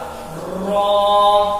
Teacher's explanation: زبان کی جو نوک ہے اس کا جو تھوڑا سا پیچھے کا حصہ، زبان ہے اس کے جو پیچھے کا حصہ ہے ہلکا وہ، اور ہمارا جو تالو ہے وہ، آپ تالو جو کھردرا حصہ ہمارے دانت کے پیچھے ہے وہ ابتدائی حصہ ہے تالو کا، وہاں پر جب زبان کو لگائیں گے را ادا ہوگا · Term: را کا مخرج